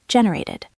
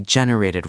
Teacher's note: It sounds like id at the end.